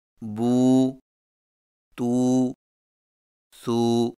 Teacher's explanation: واو مدہ میں ہونٹوں کو گول نہ تمام ملا کر تھوڑا سا کھینچ کر پڑھیں